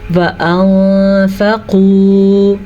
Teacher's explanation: نون ساکن کے بعد فا آیا تو ہم نے نون کی آواز کو چھپا کے اور غنّے کے ساتھ پڑھا ہے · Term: اخفاء